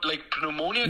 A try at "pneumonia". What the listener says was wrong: But you don't pronounce the P in English.